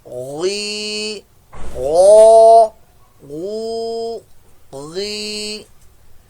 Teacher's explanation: غین حلق کے اوپر والے حصے سے یہ بھی ادا ہوگا